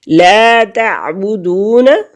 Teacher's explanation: بنی اسرائیل، یا ساکن سے پہلے لفظ کے نیچے کسرہ ہے، زیر ہے تو یہ یا مدہ ہے، اور یا مدہ کو کھینچنے کی مقدار ایک حرکت کے برابر ہے۔ لا تعبدون، واو ساکن سے پہلے لفظ پر پیش ہے تو واو مدہ ہے، اور واو مدہ کو ایک حرکت کے برابر کھینچیں گے۔